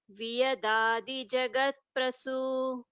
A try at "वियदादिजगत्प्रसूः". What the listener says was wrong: A small correction in Viyadadi Jagat Prasuhu, the Visarga, there's a Visarga in the end that should be heard. Viyadadi Jagat Prasuhu.